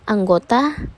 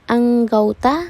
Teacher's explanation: Diftongisasi adalah perubahan bunyi vokal tunggal monophthong menjadi dua bunyi vokal atau vokal rangka diphthong secara berurutan, misalnya pada kata anggota, anggauta, sentosa, sentausa. Perubahan bunyi ini terjadi pada bunyi vokal tunggal o ke vokal rangka au